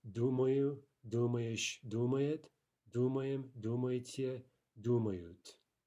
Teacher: The stress is somewhere on the stem and it's going to stay there throughout all of the forms. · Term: stem stress